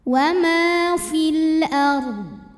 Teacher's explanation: maka dibacanya tebal fil ARD dan ddnya harus tetap terbaca tapi tidak boleh memantul karena Dod tidak punya sifat Qalqalah